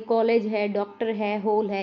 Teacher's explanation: यह ध्वनि अ और ओ के बीच होती है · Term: आगत स्वर